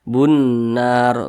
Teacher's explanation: Jadi huruf lamnya ini dia tidak dibaca nih, langsung masuk ke huruf yang di depannya. Bunnar, di sini lamnya nggak dibaca dia. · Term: idgham syamsiyah